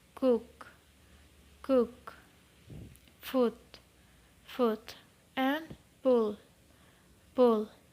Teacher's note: its horizontal position is back and its vertical position is high